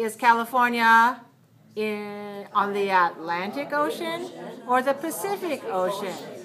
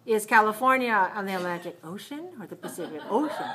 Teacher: I'm stressing Atlantic and Pacific